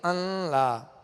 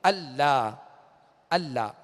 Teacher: تو بعض لوگ جو ہے اس کو معلومات نہ ہونے کی وجہ سے یا بے احتیاطی سے وہ پڑھ دیتے ہیں ان لا. تو نون کو لام میں داخل کر دینا، یہاں غنہ ظاہر نہیں ہوگا